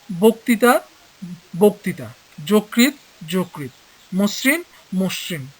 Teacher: আদ্য অ এর পরের ধ্বনিতে রিকার থাকলে সেই অ এর উচ্চারণ ও এর মতো হয়।